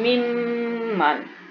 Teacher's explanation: آپ جب میم بولتے ہیں اپنی انگلی جو ہے ایک انگل اپنی ناک کی ایک سائڈ پہ رکھے تو آپ کو پتہ چلے گا کہ آپ کی آواز جو ہے وہ ناک میں جا رہی ہے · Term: گننا